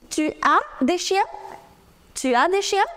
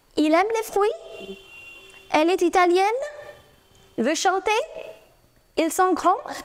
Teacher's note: they are all normal sentences, but since you've raised your tone, they become a question. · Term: raise your tone